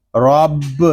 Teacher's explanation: پر پڑھیں گے کیونکہ را کے اوپر زبر آ رہا ہے، با مشدد ہے، اس کو جماؤ کے ساتھ ادا کریں گے